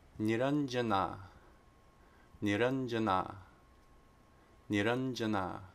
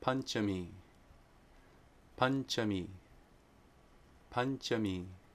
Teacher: if anuswara precedes a palatal sound, it's the nya, the palatal nasal sound.